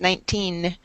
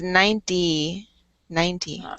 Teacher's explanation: when we have the teen numbers, we put the accent on the second syllable so that we can hear the N, but if it ends in a 0, like 80 or 90, then we put the accent on the first syllable